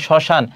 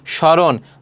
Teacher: শব্দের প্রথম ব্যঞ্জনের ম ফলা সংযুক্ত হলে সাধারণত তার কোন উচ্চারণ হয় না